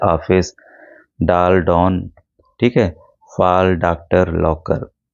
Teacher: आ और ओ की बीच की ध्वनि है इसका प्रयोग अंग्रेजी शब्दों में को हिंदी में लिखने के लिए किया जाता है। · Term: आगत ध्वनि